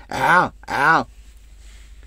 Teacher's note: C'est pas au fond de la gorge, mais juste à côté, après la langue, la gorge, au début de la gorge.